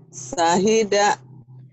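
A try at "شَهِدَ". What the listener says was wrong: Sya-nya kurang ya, Bu ya. seperti meringis i. Nah, seperti mau gosok gigi itu, Bu. Terus keluarkan udaranya. Sya.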